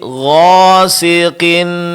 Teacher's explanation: Huruf qaf memang huruf tebal ya, Pak ya. Tapi ketika dia berbaris kasrah, berbaris bawah, ketebalannya berkurang.